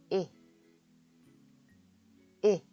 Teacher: 미소 짓듯이 입술을 양쪽으로 당긴 상태에서 살짝 벌려서 이 하시면 됩니다.